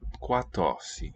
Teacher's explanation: Note that the R there is an alveolar trill. · We preserve the labial.